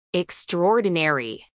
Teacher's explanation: acentuación en la segunda sílaba